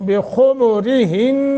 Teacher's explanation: را باریک خا کو موٹا اور پیش کے ساتھ پڑھیں گے